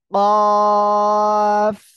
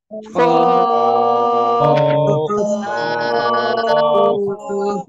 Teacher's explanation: জিহ্বার গোড়া তার বরাবর উপরে ওই তালুর সঙ্গে লাগাবো লাগিয়ে আমরা এই অক্ষরটা উচ্চারণ করব